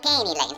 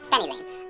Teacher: Avoid the typical short E to long A conversion.